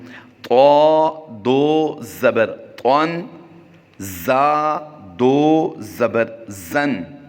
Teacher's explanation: حروف مستعلیہ سے طا اور زا ہے، اس کی سختی سے ادائیگی کرتے ہیں